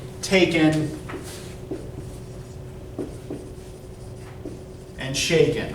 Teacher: it ends on an unstressed syllable but both syllables rhyme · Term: feminine rhyme